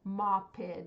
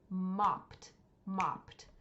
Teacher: We can hear that it's past tense because we hear a T sound at the end.